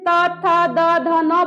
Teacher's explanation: त बोलते हैं तो मेरा जीभ सबसे पहले दोनों दांत के बीच में जाता है · इसको दंत न इसलिए कहते हैं क्योंकि इस न का उच्चारण दांत से होता है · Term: तवर्ग